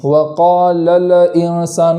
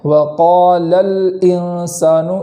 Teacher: الانسان کے لام پر جو جزم ہے اس کو زبر ہو جانے سے بچائیں گے، وقال الانسان ایسا نہیں پڑھیں گے بلکہ وقال الانسان اس طریقے سے پڑھیں گے۔